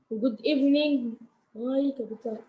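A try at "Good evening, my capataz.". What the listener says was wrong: Me, not my. Me. Me capataz.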